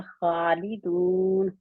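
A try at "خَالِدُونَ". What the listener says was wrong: दून, खालिदून। नून के मखरज में रहेंगे, दून नहीं करेंगे, ठीक है।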